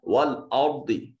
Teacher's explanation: را ساکن ہے، ما قبل مفتوح ہے، را مفخم پڑھی جائے گی